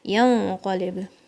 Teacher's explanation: The noon sound is going to be hidden in your nose.